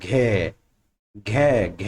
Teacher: घ में हमारे गले की कहां से आ रही है? पीछे से, कैसे? कंठी है।